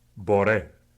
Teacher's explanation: The Bambara R is pronounced by tapping the tip of the tongue against the ridged area of the mouth, right behind the front teeth. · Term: tapped R